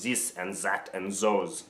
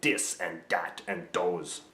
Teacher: French accents tend to use harder D sounds.